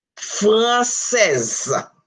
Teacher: In this case, you will hear the Z sound because S is between two vowels. When S is between two vowels in French, it has the Z sound.